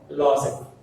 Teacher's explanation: So law. Stress falls on the law.